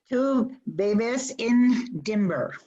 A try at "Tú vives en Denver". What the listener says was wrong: So it kind of sounded like you said bebes, which means to drink. So remember that I in Spanish is more of an E sound. Bebes. Tú vives en Denver.